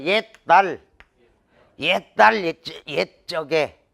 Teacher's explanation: 니은의 영향을 딱 받아가지고 시옷이 완전 동화가 일어나는 거야. 옛날. 이게 발음이 훨씬 편하거든.